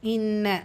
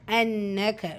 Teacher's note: நூன் முஷதா குன்னா செஞ்சு ஓதணும்